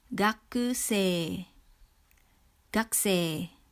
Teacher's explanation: Notice how we don't pronounce the U in the ku syllable. It becomes gakusei.